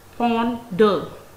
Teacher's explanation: It has two syllables, ponder. The first syllable has primary stress upon it, and the second syllable has a secondary stress. This mark shows secondary stress.